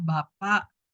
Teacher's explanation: yang ada bunyi glotalnya ada pada bapak pada akhir ya glotal pada posisi pada posisi final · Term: glotal stop, glottal stop